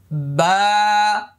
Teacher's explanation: বা এক আলিফ পরিমাণ লম্বা হবে মুখটা খালি ফাঁকা হবে